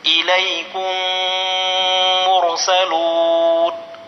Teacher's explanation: میم ساکن کے بعد میم آئے تو میم کو میم سے ملا کر غننے کے ساتھ پڑھا جائے گا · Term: ادغام شفوی